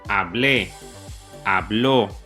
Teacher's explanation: todas tienen el énfasis en la última sílaba. Por eso se dice que rompe la regla y se le añade la tilde o el acento. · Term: palabras agudas